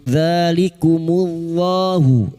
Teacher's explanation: lam jalalah yang didoli dhamma dibaca tafkim · dza alif kecil di atas 2 harakat mat tabi'i